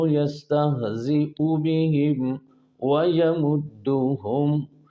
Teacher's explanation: بہم اور ہم دونوں کے میم پر غنہ نہیں کرنا ہے